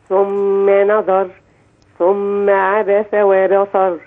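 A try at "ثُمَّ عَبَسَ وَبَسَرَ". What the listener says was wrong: وبصر بالسين.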